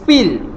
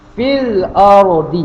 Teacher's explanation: mad dia di sini hilang serta-merta, tidak panjang